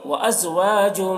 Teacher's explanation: وازواج، یہاں پر دیکھیے تنوین کے بعد حروف یومن میں سے میم ہے، تو تنوین کو میم سے ملا کر غنہ کے ساتھ میں پڑھیں گے، اس کو ادغام ناقص کہتے ہیں. تو کو پر پڑھیں گے، تو حروف مستعلیہ میں سے ہے.